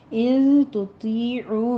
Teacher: ان تطیعوا میں نون ساکن کا قاعدہ اخفا کی ہے،